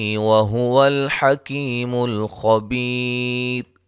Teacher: خا کو موٹا ادا کریں گے، بی یا مدہ ہے، وقفاً را باریک پڑھیں گے، ملانے کی صورت میں را کو موٹا ادا کریں گے۔